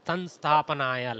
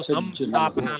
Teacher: Actually, little bit of nasality more than makara. Okay, little bit more nasal.